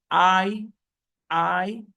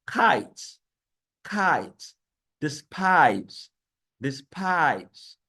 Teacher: And these diphthongs include, we have I, like I said before, I sound, they glide from A to E